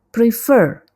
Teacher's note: prefer ini ada 2 syllable, tapi penekanannya pada suku kata kedua